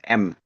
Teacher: huruf mim ini adalah huruf hidung. Huruf yang melibatkan pergetaran rongga hidung atau ghaisyum gitu ya atau huruf yang sengawuh gitu kan ya.